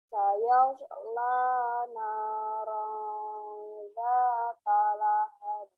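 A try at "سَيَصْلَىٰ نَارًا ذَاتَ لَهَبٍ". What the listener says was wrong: Oke, mantap. Ngayunnya enak banget ya.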